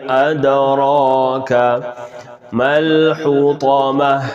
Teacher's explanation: دال ساکنہ کلکلا کریں گے